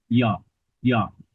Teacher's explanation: বর্ণ উচ্চারণের সময় জিহ্বা দ্বারা যে সকল বর্ণ সেই সেই উচ্চারণ স্থান পূর্ণরূপে স্পর্শ করে না, অর্থাৎ ইয়ের উচ্চারণ স্থান তালু হলেও তার উচ্চারণের সময় সে তার উচ্চারণ স্থান অর্থাৎ তালুকে পূর্ণরূপে স্পর্শ করে না, জিহ্বা স্পর্শ করে না। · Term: ঈষৎ স্পৃষ্ট বর্ণ